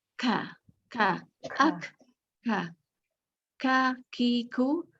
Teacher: lagi huruf Kaf mereka gagal karena huruf Kaf itu apabila dia lebih terbuka tenggorokannya jadi ada keluar hembusan nafas